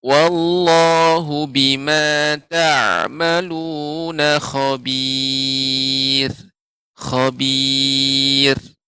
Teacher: ra yang wakaf, ra yang diwakafkan, kemudian sebelumnya ya sukun, sebelumnya ya sukun, maka juga dibaca dengan tipis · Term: tarqiq